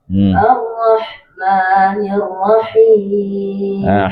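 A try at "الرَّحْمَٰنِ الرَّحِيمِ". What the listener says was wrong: Jangan jangan jangan masuk hidung.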